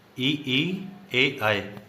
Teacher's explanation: जीभ का आगे का भाग सक्रिय होता है। या फिर जीभ के आगे का भाग का प्रयोग किया जाता है। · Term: अग्र स्वर